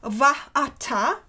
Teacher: consonantal glottal stop, quite indistinct probably phonetically, which prevented the merger of the two vowels into one long A, and which forms the hiatus and is responsible for the trisyllabic metrical value of the word vatai, the dative singular.